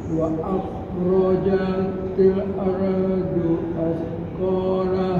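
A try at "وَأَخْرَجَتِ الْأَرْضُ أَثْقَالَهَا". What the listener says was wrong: nah, lam sukunnya belum kena. Wa akhrajatil til ardu.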